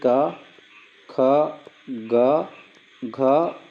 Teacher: पहला और जो दूसरा होता है ये अघोष होता है